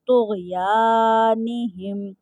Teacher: طا غین کے ساتھ مل کر پڑھا جائے گا، کیونکہ غین کے اوپر جزم ہے۔ طا اور غین حرف مستعلیہ میں سے ہیں، تو ان کو ہر صورت پر یعنی موٹا پڑھیں گے، اور یہاں پہ الف مد کا قاعدہ بھی لگ رہا ہے، کہ الف سے پہلے زبر آ رہا ہے، اور ہا میم کے ساتھ مل کر پڑھا جائے گا، کیونکہ میم ساکن ہے۔